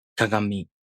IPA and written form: kaŋamʲi (kagami)